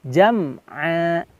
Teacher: jangan ada pantulan di huruf mim mati. Me-nya ini jangan sampai ada, melainkan dibersihkan jam'a, seperti itu.